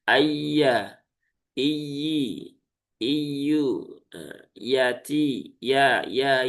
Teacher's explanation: ya di tengah lidah langit-langit atas